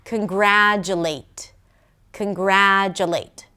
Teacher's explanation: the late at the end is a pure vowel. It's a secondary stress and it cannot be reduced to a schwa.